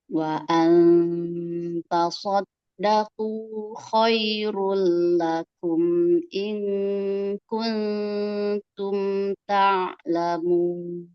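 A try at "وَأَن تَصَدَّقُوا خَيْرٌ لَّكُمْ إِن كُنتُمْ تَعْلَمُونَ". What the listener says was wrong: Dalnya majukan lagi makhrajnya.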